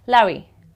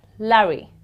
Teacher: So a British would pronounce this word as Larry. You hardly would hear the R.